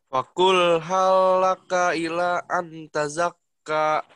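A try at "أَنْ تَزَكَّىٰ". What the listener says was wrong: Cuman pada saat ikhfanya agak sedikit kurang ya. Atazakka, bukan antazakka. Atazakka.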